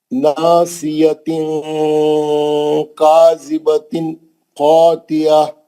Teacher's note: حروف حلقیہ آ گیا نا تنوین کے بعد خا. آپ غنہ نہیں کرنا ہے نا وہاں.